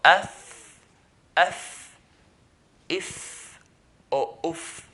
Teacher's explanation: So af, if, or uf. So the front 2 teeth, the bottom of it, at the tip, touching the inside of the lower lip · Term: fa